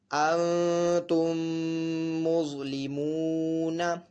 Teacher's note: ضا حرف مستعلیہ میں سے، تو اس کو پر بھی پڑھیں گے · واو ساکن سے پہلے پیش ہے، واو مدہ ہو رہا ہے، تو اس کو بھی ایک الف دو حرکات کے برابر کھینچ کر پڑھیں گے · میم ساکن کی آواز ہلکی سی ناک میں لے کے جائیں گے اور ایک الف دو حرکات کے برابر کھینچ کر پڑھیں گے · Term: غنہ